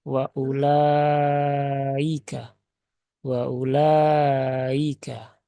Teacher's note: jadi hamzahnya tidak benar-benar terbaca Hamzah Tetapi dia terbaca dengan terseret atau lebih ringan Nah itu tidak diperkenankan ya karena Hamzah di sini tidak ada